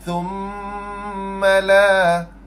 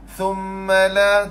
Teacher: Thumma lidah mesti kena keluar, dan bunyi dengung tu bagi lama sikit, 2 harakat.